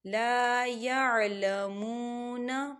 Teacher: وقال الذین لا يعلمون، مون، واو ساکن ہے، واو ساکن سے پہلے پیش ہے تو یہاں پر واو مدہ ہو رہا ہے، تو یہاں بھی دو حرکت کے برابر کھینچ کے پڑھا جائے گا